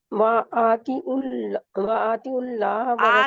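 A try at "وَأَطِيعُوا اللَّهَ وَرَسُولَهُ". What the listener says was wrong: آپ لمبا کر رہے ہیں تو آپ کو موٹا کریں اور بریک کریں، موٹا کریں اور لمبا کریں.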